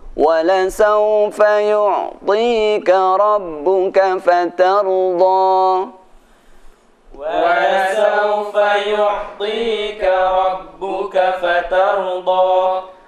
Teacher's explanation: Nah, di sini fatarda benar ada tanda bendera, tapi setelah kita perhatikan ternyata tidak ada hamzah setelah fatarda, tidak ada tasydid, maka fatarda cukup 2 harokat